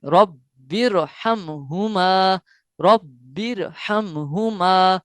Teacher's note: रॉ पुर पढ़ा गया है क्योंकि रा के ऊपर जबर है।